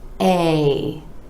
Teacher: want to drop your jaw and bring it back up a there's two parts to this sound and you can get them both by dropping the jaw and bringing it back up